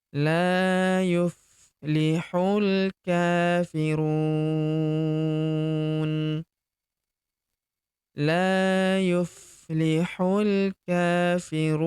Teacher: Karena di depan huruf ru terdapat wau sukun sebelum huruf pemberhentian. Dan huruf pemberhentian huruf na kita sukunkan atau kita matikan.